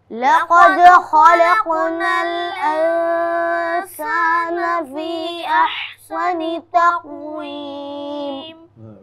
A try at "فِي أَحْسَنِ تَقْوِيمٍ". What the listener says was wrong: فی میں بیٹا آپ کو اس میں مد نہیں بنا ہوا ہے؟ مد بنا ہے بی فی میں؟